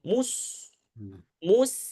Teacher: Nah, maka tentu masalah detail ini ya bacaan yang kedua dengan sedikit menarik ee dua bibir ya ketika sukun itu lebih lebih jelas daripada dia masih memonyongkan dua bibir seakan-akan masih pengaruh damahnya mim